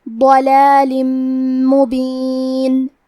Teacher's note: میم حروف الادغام بغنہ میں سے ہے، تو ہم تنوین کو میم میں ملا کے غنہ اور تشدید کے ساتھ یہ حکم کو ادا کریں گے · کلمت ضلال میں حرف الضاد کی ادائیگی زبان کے کروٹ اور اوپر کے داڑھوں کی جڑ سے ہے. ضاد حروف التفخیم میں سے ہے، تو ہم یہ حرف کو بھاری آواز میں پڑھیں گے.